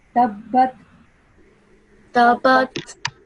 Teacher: we have a ba mushaddad here, so we have to make put a little stress on the ba sound.